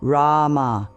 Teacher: The R is soft, almost like a D. The first A is long, like in father. The M bridges to the final A, which fades away naturally.